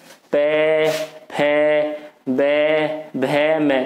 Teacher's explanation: दोनों ओठ जो हमारे दोनों ओठ मिल रहे हैं आपस में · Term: ओष्ठ